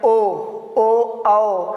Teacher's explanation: ओ आओ बोलने में क्या करते हैं? हमारा ओंठ क्या होता है? गोलाकार होता है। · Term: वृत्तमुखी